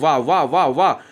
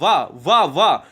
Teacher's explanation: दांत भी लग रहा है, दंत लग रहा है, दंत, वाह, और ओंठ भी लग रहा है, ओष्ठ भी लग रहा है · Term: दंत्योष्ट व्यंजन